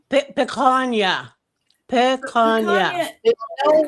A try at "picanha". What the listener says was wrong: There's no y in that. Picanha. There's no y.